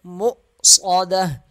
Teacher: حمزہ کو تھوڑا سا جھٹکا دیں گے